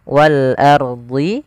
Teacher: sepanjang dua harakat kemudian walard ini ada alif lam Qariah yaitu alif lam yang tertulis tapi dia dibaca huruf lamnya dengan jelas Wal ardhi rnya di sini ada hukum tajwid berupa ro tafhim